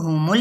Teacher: میم کی پیش کو لام کے ساتھ ملائیں گے تو ہمل، لیکن لام کو ہلانا نہیں ہے